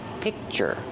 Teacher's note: So it's like you don't hear the k, but the position is there.